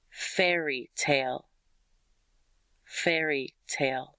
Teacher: Fair and tale have a lot of emphasis.